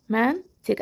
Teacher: Bu sözlərin sonundakı q da ya olduğu kimi qalır, ya özünün kar qarşılığına, yəni K samitinə çevrilir. K samiti kimi tələffüz edilir.